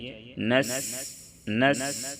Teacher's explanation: سین کی ادائیگی میں سیٹی جیسی آواز نکلنی چاہیے، نس نس اس طرح سے سیٹی کی آواز نکال کر کے پڑھیں گے۔